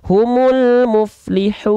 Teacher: Alif lam dibaca jelas dan sempurna karena bertemu dengan huruf hidup yang tidak bertasydid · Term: alif lam komariah